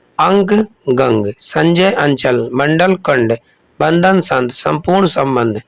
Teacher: अनुस्वार का उच्चारण उस व्यंजन के अनुसार नासिक ध्वनियों के रूप में होता है